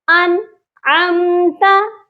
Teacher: اس کو انعمتا ایسے بالکل نہیں پڑھنا، انعمتا، کیونکہ نون ساکن کے بعد عین ہے، اسی لیے یہاں پر اظہار ہوگا. صرف یہ ظاہر کرنا ہے کہ آپ نے نون کو پڑھا ہے، یہاں پر غنہ نہیں کرنا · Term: اظہار حلقی